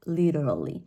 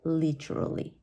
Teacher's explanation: the letter T sounds more like a d right it's and it's it's like uh like playing with your tongue